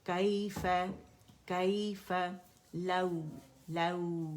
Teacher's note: फतह के लिए आवाज़ ऊपर की, नरमी से वाव से मिली